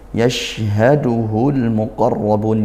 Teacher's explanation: makhrajnya syin tengah lidah dinaikkan